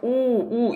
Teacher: 오, 우 입술 모양이 동그래지죠? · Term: 원순 모음